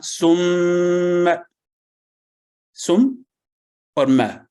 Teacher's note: دونوں ہونٹوں کے خشک حصے کو قدر دباؤ کے ساتھ ملانے سے حرف میم ادا ہوتا ہے، اور جب اس پر تشدید آ جائے تو اس کو تھوڑا زیادہ مضبوطی سے شدت کے ساتھ ادا کرنا چاہیے۔